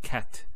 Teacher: So we say cat. So the T doesn't have any vowel associated with it. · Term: sukoon